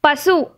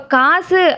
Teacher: காசு அப்படின்னு வரும்போது கா வந்து நெடிலா இருக்கறதுனால இந்த சூவோட சவுண்டே குறைஞ்சிடும். சோ காக்குதான் சவுண்ட் அதிகமா வரும். · தனி குரில் எழுத்துக்களுக்கு தனி இப்போ வந்து பசு அப்படிங்கிறது வந்து பா வந்து குரில் எழுத்து, சு வந்து நம்மளுக்கு கசட தபர வல்லின உகரம் எழுத்தா. ஸோ இந்த பசு அப்படிங்கிறதுல வந்து சு வந்து 1 மாத்திரை அளவுக்கு முழுசாகவே ஒலிக்கும். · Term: முற்றியல் உகரம்